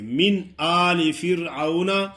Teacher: نجیناکم من، آگے من پہ جو ہے نا غنہ نہیں ہوگا کیونکہ حروف ہلکی، آگے حمزہ ہے تو من صاف پڑھیں گے